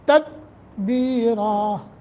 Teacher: تدبیرا قلقلہ نہیں کریں گے